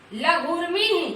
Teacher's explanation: यहाँ पर लघु में हरस्व है और उर्मी में दीर्घ ऊ है, दोनों मिलकर के यहाँ पर देखिए क्या बना हुआ है, लघुर्मी, यानी यहाँ भी दीर्घ ऊ हो गया है।